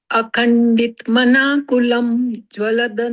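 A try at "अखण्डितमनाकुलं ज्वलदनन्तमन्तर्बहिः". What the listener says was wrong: एक मिनट आप मेरे कॉमा देखिए, आपने कॉमा लगाए। लोग जिनको थोड़ा सा इश्यू आ रहा हो अगर, तो वो कॉमा ध्यान रखो। देखो, अखंडित मनाकुलम पहला कॉमा, ठीक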